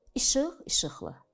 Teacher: sözün son hecasındakı sait qalın olduğu üçün onu artırdığınız şəkildə qalındır